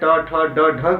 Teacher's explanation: जब हम इनका उच्चारण करते हैं ट ठ ड ढ को, तो हमारी अलजिह्वा मुड़कर मूर्धा को तेजी से झटका देती है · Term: ओज वर्ण